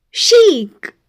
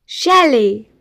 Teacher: In French, the letter combination ch is most commonly pronounced with a soft sh sound.